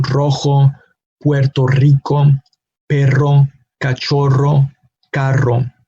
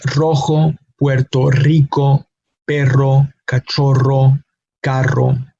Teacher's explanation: it's like the tongue is producing a vibrating sound with top of our mouth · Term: stronger R pronunciation